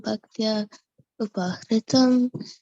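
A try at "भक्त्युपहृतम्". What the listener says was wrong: Can you say Bhakti Upahritam instead of Bhaktya Upahritam? Say Bhakti Upahritam. One word.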